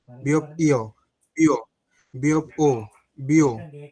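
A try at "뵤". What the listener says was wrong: এই যে দেখেন আপনার ও এবং ইও দোনোটার উচ্চারণ সেমই আসতেছে। বিয়প ও বিও, বিয়প ইও বিও, দেখেন আপনি দুইটাই বিও বলতেছেন। দুইটা কি বিও? একটা বো আর একটা বিও।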